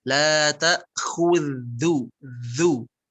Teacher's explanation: Baik, zalnya ujung lidahnya digigit.